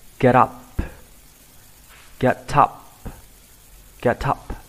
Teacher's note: Bạn có thể đọc nối âm chữ T này lại với phần up. Bạn đọc thành get up.